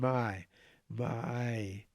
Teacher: you'll find that the tongue goes from ah to e.